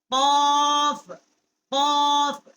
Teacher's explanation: قوے کے متصل جب زبان جو ہے اوپر کے تالو کی طرف ٹکر کھاتی ہے تو اسے قاف جو ہے اس کا مخرج ادا ہوتا ہے